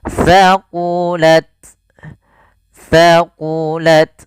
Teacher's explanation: jangan banyak desisannya, sedikit aja hamas ya, alir nafasnya